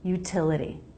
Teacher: second T is between two vowels and doesn't start a stressed syllable, so it's a flap.